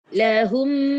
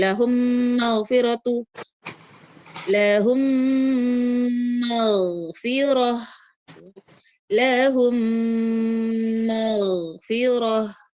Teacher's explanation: keluarnya itu dari hidung disempurnakan. Jadi dia memang agak lama ya, agak lama tinggalnya. Karena dia butuh waktu, guna itu dialirkan ke hidung itu butuh waktu, jadi tidak boleh terlalu cepat ya. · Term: gunnah